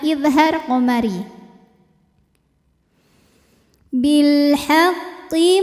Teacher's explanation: karena alif lam menghadapi huruf qamariah yaitu ha maka lam dibaca dengan jelas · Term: alif lam qamariyah